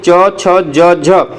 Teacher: इनको आप बोलेंगे तो आपका जीभ क्या होगा, तालु में सटेगा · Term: तालव्य व्यंजन